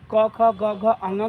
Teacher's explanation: क ख ग घ अंग का उच्चारण स्थान कंठ होता है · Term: कवर्ग